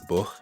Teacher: distinctive sounds like K becoming a softer G sound let's take the word book in scals it'll be pronounced book